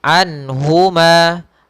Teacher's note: harus jelas suara nunnya, tidak boleh ditahan, tidak anhuma, tapi anhuma jelas. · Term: izhar halqi